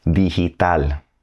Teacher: G before an I or an E is going to sound like an English H.